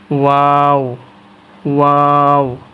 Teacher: দুই ঠোঁট গুল হবে এবং বাতাস বাইর হবে